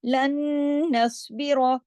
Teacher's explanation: नून पे तशदीद है, गुन्ना होगा अकमल, बड़ा गुन्ना होगा, देर तक आवाज नाक में छुपेगी। नस्बिर, स्वाद मोटा, इसमें रॉ भी हैवी करके, रा कंडीशनल है, जबर है, इसलिए रा को भी मोटा पढ़ेंगे।